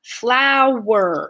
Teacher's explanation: there's a consonant connecting the vowel sounds with a w sound so that's why it's two syllables